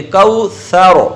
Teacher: زبان کا اگلا حصہ اوپر اٹھاؤ اور اس کو کپ کپاتا ہوا رکھیں گے تب آپ کی مکمل را پر ہو جائے گی